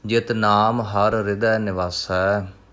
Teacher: ਹਰ ਤੇ ਹਿਰਦੈ ਦੇ ਵਿਚਾਲੇ ਥੋੜ੍ਹਾ ਜਿਹਾ ਰੁਕਣਾ, ਦੋ ਰਾਰੇ ਇਕੱਠੇ ਹੋ ਰਹੇ ਹਨ